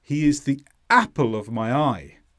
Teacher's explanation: you need to stress the first part of Apple app and then the word I